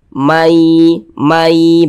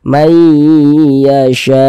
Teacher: Bunyi nun sukunnya dimasukkan ke huruf ya, melebur dia ke huruf ya. Jadi dibaca mai begitu. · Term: idgham bi gunnah